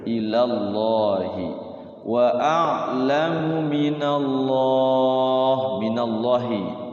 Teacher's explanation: Lafaz Allah dibaca iya tafkhim lagi tebal. Jangan minallahi, kalau minallahi tipis.